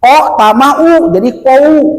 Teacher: waw mati itu di dalam ikro bunyinya ataupun bacaannya menjadi o